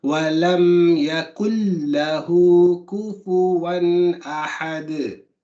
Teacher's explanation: the noon isn't read at all when you carry on. The noon completely becomes the lam. So that's why the noon doesn't have anything, and you see the shadda on the lam. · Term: idgham